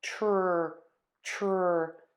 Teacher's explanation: tense lips and the back of your tongue is pulled up you are going to touch the tip of the tongue to that spot where your teeth meet the skin on the roof of your mouth for that t and then either pull the tip of the tongue down or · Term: TR combination